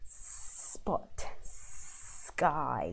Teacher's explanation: So you have to lengthen the S sound.